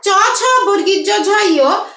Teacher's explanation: জিহ্বার মাঝখানটা আমাদের উপরে যে তালু আছে তালুর সাথে যে লাগছে, এই জন্য তালব্য বা অগ্রতালুজাত বর্ণ।